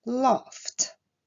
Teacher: le verbe laugh se terminant par un son sourd, la terminaison ed ici se prononcera t